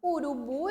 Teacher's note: O bu é a sílaba mais forte dessa palavra.